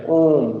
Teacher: प्लुत का उच्चारण करने में 3 मात्रा का समय लगता है